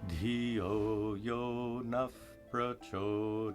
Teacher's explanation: When a visarga is followed by a pa or pa, it's pronounced as an F sound.